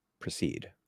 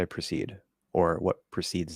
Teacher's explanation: they can both reduce to a schwa